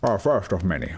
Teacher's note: Sean Connery has more of like a lisp